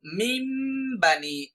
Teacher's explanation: আমরা তখন নুনটাকে উচ্চারণ না করে সরাসরি মিমকে উচ্চারণ করব। এটাই হচ্ছে তাজউইদের ইকলাবের নিয়ম।